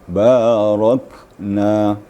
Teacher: ada mahmus Kaf sedikit Ya hanya sedikit sekedar decitan gitu